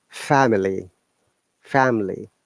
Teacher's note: this A is a diphthong, as you can see. It is a combination A and E sound.